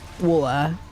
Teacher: say water when you're super lazy, tired, and can barely hear anything more than some W and some of the A. Water, like that.